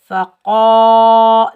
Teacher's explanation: क़ाफ के ऊपर ज़बर, आगे अलिफ खाली है, ये अलिफ मद्दा, इसको हम एक अलिफ की मिकदार खींच कर अदा करेंगे। · क़ाफ़ हरूफ मुस्ताला में से है, इस काफ को हम मोटा पढ़ेंगे। इसके ऊपर 2 नुक्ते हैं, जिस काफ पर 2 नुक्ते होंगे वो मोटा पढ़ा जाएगा और जिस पर 2 नुक्ते नहीं होंगे वो बारीक पढ़ा जाएगा।